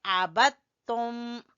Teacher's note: ایک ہی مخرج کے ایک ہی جگہ سے دال اور تا نکلتے ہیں، اس لیے یہاں پر دال کو تا میں مدغم کر دیا گیا ہے، دال کو تا میں داخل کر دیا گیا ہے، اس لیے یہاں پر ہم پڑھیں گے عبدتم.